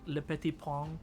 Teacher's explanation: le petit pont is much more of a nasal sound. It's more in the back of your mouth.